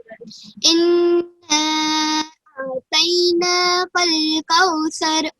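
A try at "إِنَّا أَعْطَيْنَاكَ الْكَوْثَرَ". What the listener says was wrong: तो को मोटा पढ़िए, अअतैना, अअतैना।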